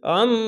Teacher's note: আইনটিকে মোটা করে গলা চিপে পড়বেন